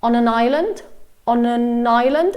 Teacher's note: all of these three words got kind of like linked together through the sounds